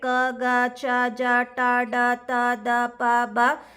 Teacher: ಅಂದ್ರೆ ಕಡಿಮೆ ಉಸಿರಿನಿಂದ ಉಚ್ಚರಿಸಲಾಗುವ ವ್ಯಂಜನಗಳು we are ಪ್ರನೌನ್ಸಿಂಗ್ these letters with less ಬ್ರೀತ್ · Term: ಅಲ್ಪ ಪ್ರಾಣಾಕ್ಷರಗಳು, ಅಲ್ಪಪ್ರಾಣಾಕ್ಷರಗಳು